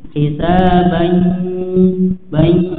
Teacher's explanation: kemudian ditahan dan dimasukkan ke hidung ya, karena idgham bi gunnah ini ya masuk ke hidung ya.